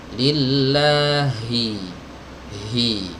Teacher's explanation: huruf H ya keluar dari tenggorokan bagian bawah. Ya, dari tenggorokan bagian bawah. · Nah, sementara hamzah itu serba putus, suaranya putus, ya, aliran udaranya juga putus. Kalau huruf H ini suaranya ngalir, aliran udaranya juga ngalir. Lillahi, hi, ini harus ditahqiq betul-betul teman-teman ya, harus keluar dari tenggorokan bagian bawah.